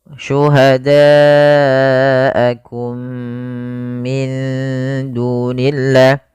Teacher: Ini merupakan bacaan idgham mimi. Yaitu mimnya dimasukkan kepada mim yang kedua dan ditahan.